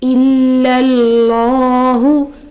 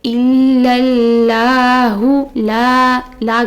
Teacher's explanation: یہاں اس میں جلالہ سے پہلے زبر آ رہی ہے، اس کی وجہ سے ہم اس میں جلالہ کو موٹا پڑھیں گے